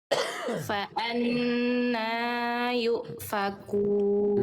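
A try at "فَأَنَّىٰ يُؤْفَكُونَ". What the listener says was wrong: Nanya kepanjangan sedikit. Nanya dua harakat aja.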